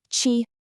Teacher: the tone here is the first tone. That's the easiest one. It's just high and flat. No ups, no downs